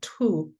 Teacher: this T with an aspiration, the tu, was mostly said by older people, both men and women, but slightly more older women.